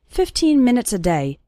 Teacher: the last two syllables of minutes become very small and just serve to connect with the word day